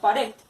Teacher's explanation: La palabra pared se divide en dos sílabas. La sílaba red es de la que lleva la acentuación, pero no lleva tilde, pero tiene su acento. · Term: acento prosódico